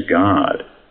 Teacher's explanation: Americans shorten the vowel in dance to dance, and lengthen the O in God to guard.